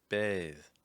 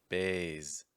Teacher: voiced th sounds often get confused with several other consonant sounds for instance the letter z